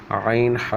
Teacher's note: عین ہا، یہ حلق کے درمیانی حصے سے